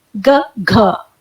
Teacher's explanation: तो जब आप क बोलते हैं तो थोड़ी हल्की सांस बाहर की तरफ निकलती है उसका उच्चारण करते वक्त, और जब हम ख बोलते हैं तो थोड़ा ज्यादा सांस बाहर निकलता है, क ख। ऐसे ही ग बोलते वक्त थोड़ी हल्की सांस बाहर निकलती है, और घ बोलते वक्त थोड़ा और ज्यादा सांस बाहर निकलती है, ग घ। क ख ग घ, कम ज्यादा इस तरीके से सांस निकल रही है।